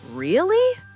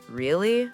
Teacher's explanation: If I say really with a rising voice, I am surprised. If I say really with a falling voice, I am bored or I don't believe you. Intonation is like the hidden meaning behind the words.